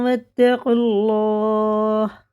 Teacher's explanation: دونوں الف لام واو بالکل نہیں پڑھنے میں آئیں گے، قاف لگے گا سیدھا لام میں، یہ حرف کیونکہ حرف شمسی کا قاعدہ ہے.